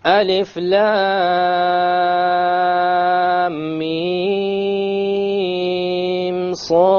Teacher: Between the lam and the mim, and that is it. I didn't do a ghunna between the mim and the sad.